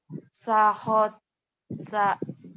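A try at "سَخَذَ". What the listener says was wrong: Sakhosa. Ya ini cedal ya. Cadel. Sakhosa. Sakhosa.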